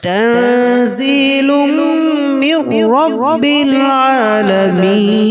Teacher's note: তানজিলুম তানবিনের পরে মিম আছে, ঈদগামে বাগন্না।